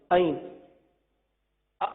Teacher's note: وسط حلق سے ادا ہونے والا یہ حرف عین ہے. عین ہے جسے بہت سارے ایسے بھی ہیں جو توجہ نہیں کرتے اور عین کو حمزہ پڑھ دیتے.